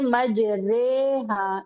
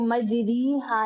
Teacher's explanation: را کھڑی زیر ہم پڑھتے ہیں نا ری، لیکن اس کو ہم امالے کے ساتھ پڑھتے ہیں، اس کو ہم پڑھتے ہیں مج رے ہا، اس کو ہم مج ری ہا نہیں پڑھتے. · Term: امالہ